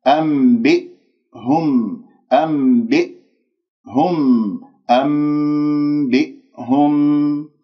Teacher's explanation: كسرة الباء والهمزة الساكنة بقفل الأوتار الصوتية. الخطأ الذي يحدث أنه أنت تقلقلها أنبئهم خطأ، أو تخرج همزتين أنبئهم، هذا خطأ.